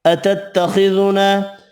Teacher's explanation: خا حروف مستعلیہ پر پڑھیں گے، الف مدہ ایک الف کی مقدار میں کھینچ کر پڑھنا ہے